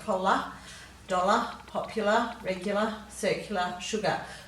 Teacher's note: we don't usually pronounce it as an r sound at the end we often give it a schwa sound